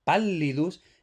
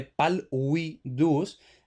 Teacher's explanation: Entonces, pallidus, esto en principio procede de palvidus, pero vemos que como es L wow, pues entonces se asimila y por tanto se convierte básicamente en una L geminada